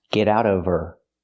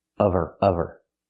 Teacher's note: we need the v sound in of because we don't pronounce the h in her. We link the sounds.